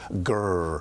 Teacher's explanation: we pronounce the r after a vowel he actually calls it a doggy sound